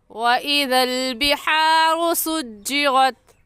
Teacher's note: बिहारू में ग़ा के ऊपर पेश है, इसलिए इस ग़ा को पूरी यानी मोटा करके पढ़ेंगे, और मोटा करने का तरीका कि आपके दोनों होंठ गोल हो जाए।